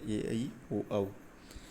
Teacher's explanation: ओ औ के उच्चारण में ओष् का योग होगा। · अब ए आई के उच्चारण में तालु का योग होगा